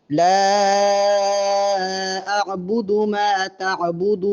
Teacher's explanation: آخر میں جب وقف کریں گے تو نون کی آواز واضح آئے